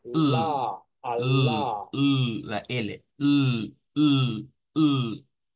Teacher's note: un sonido alveolar lateral aproximante